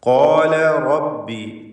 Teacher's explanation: ല എന്ന ലാമിൻ്റെ ഉച്ചാരണം തർത്തീഖോട് കൂടിയാണ് ഇസ്തിഫാലിൻ്റെ ഹർഫായത്.